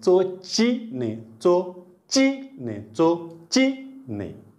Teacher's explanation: चो चो म्हणताना समोरच शेंडा आणखी, ची म्हणताना जिभेच्या कडा उचलल्या, चोची ने चोची ने चोची ने.